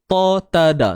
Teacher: Tiga-tiga tu semuanya adalah huruf yang datang daripada hujung lidah akan kena pada pangkal gigi, tempat tumbuh gigi belah atas. Kan, siapa yang dah ikut sebelum ni seminar makhraj huruf, saya yakin bila saya cerita ni tuan-puan faham lah.